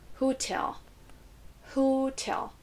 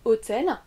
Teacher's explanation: On ne dit pas hôtel en anglais, on va prononcer plus la deuxième syllabe. L'accentuation ici est sur la deuxième syllabe.